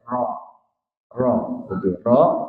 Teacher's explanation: sifat yang kelima ada takrir takrir takrir ini ee artinya mengulang jadi mengulang tu kayak bergetar tapi tipis